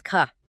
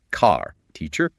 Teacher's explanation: In many standard British accents, the R at the end of a word like car or teacher is often dropped or pronounced very softly. It's called non-rhotic.